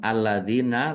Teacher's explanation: lamnya ada tasdidnya, dibaca double, ditekan dan ditahan biar tampak double. Dal kasroh ya sukun mat tabi'i, panjang 2 harokat.